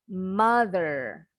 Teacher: kalau orang Amerika r-nya masih kedengeran contoh Umpama dikata Oh Mother kalau orang Amerika masih kedengaran bunyi huruf r itu cuma melengkungnya lidah kita melengkung nyentuh langit-langit di dalam mother